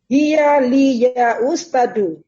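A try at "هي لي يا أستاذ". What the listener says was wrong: Nah, taknya panjang. Hiya li ya ustazu. Nah, bukan ustazu. Ustazu.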